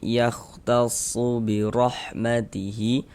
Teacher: Ini huruf ro memiliki harakat fathah ini ya. Maka huruf ro dibaca tabkhim, dibaca tebal. Sehingga ketika kita mengucapkannya itu dengan menaikkan pangkal lidah kita. Birahmatihi hi dibaca panjang.